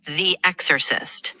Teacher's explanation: The stress is on the first syllable. It's exorcist, with the emphasis on the X.